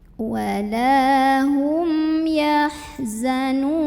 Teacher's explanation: Walahum yahzanun nun mad arid li sukun karena ada mad tabi'i ketemu sama huruf yang disukunkan karena waqaf. Mad tabi'inya waw sukun sebelumnya dhammah, huruf yang disukunkannya nun, maka dibaca panjang, boleh 2, boleh 4, boleh 6 harokat asal konsisten dalam sekali membaca.